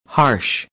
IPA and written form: hɑːrʃ (Harsh)